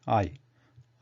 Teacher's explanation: The lips, the mouth starts with A, like the wide open A sound, but quickly changes the state of the lips to E position, like I, very quickly, I, I.